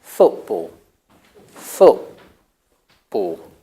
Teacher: pronounce the T as the glottis so what you do is you're closing your glottis there's no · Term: glottal stop